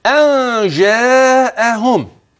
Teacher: اخفاء حقيقي نون ساكنه اتى بعدها جيم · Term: إخفاء حقيقي